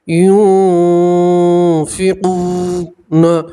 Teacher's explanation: نون ساکن کے بعد فا آتا ہے تو نون ساکن کو آپ ناک پہ چھپائیں گے اور ایک الف کے برابر گننا بھی کریں گے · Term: نون ساکن کا اخفا